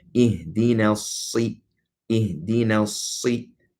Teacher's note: It's a sun letter, being that you don't pronounce the lam, if the sukun on it.